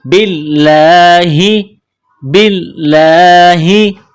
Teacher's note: لفظ اللہ کے نام سے پہلے زیر ہے تو لفظ اللہ کے نام کو باریک کرنا ہے